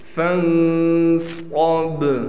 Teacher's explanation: صاد کو موٹا کر کے پڑھیں گے اور بار پر قلقلہ ہوگا